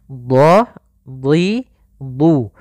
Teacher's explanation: dhad huruf isti'la dan huruf itbaq yang tebal dan juga pangkal lidah terangkat